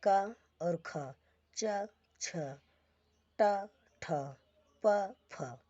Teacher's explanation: वर्ग का पहला अक्षर और दूसरा अक्षर ये अघोष होता है